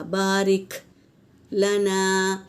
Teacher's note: اللہم بارک، کاف پہ سکون ہے تو یہاں پر ہمس ہوگا